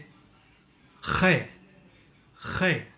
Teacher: चलिए हम गलगलाते हैं। ख़ै को उच्चारण करने के लिए आपको गलगलाने वाला ध्वनि के साथ के का ध्वनि यानी का ध्वनि मिलाना चाहिए